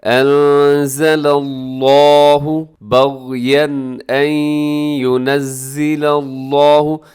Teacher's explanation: لفظ اللہ کو اپنے موٹا پڑھنا ہے کیونکہ لفظ اللہ کے لام سے پہلے لام کے اوپر زبر ہے، اسے موٹا کر کے آپ نے پڑھنا ہے۔